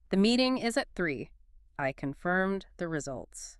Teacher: And as you say them, physically feel that slight downward pitch movement on the final word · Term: Downward inflection